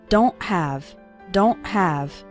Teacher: it's more of a stop at the back of your throat the sound cuts off very suddenly